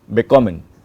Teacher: the stress is on kommen